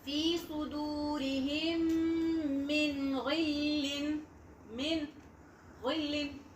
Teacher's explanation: The sound of noon is clear, is hard.